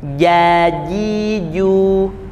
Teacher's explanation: Huruf jim, ja itu tengah lidah, bukan ujung lidah. Kalau ujung lidah bunyinya seperti huruf C atau huruf J.